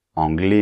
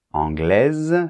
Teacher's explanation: c'est très important que pour le féminin tu prononces bien le ze de la fin